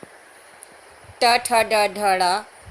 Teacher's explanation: ट वर्ग में ट ठ ड ढ ड़, इनका उच्चारण स्थान मूर्धा